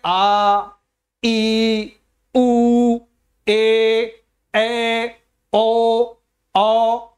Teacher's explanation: खींच के बोले जा रहा है 2 मात्रा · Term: दीर्घ स्वर